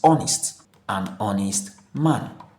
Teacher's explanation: So the pronunciation starts with a vowel sound o making an honest man correct and making a honest man wrong. · The H here is silent